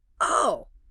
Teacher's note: A high-pitched O signals surprise.